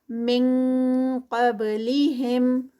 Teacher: من آگے قاف ہے تو ہم نون ساکنہ کے بعد قاف کے ہی مخرج پہ چلے جائیں گے. اخفا ہے اور ہیوی اخفا ہے، ING کی ساؤنڈ والا. قب قاف ہیوی اور با کا قلقلہ ہوگا یہاں پر.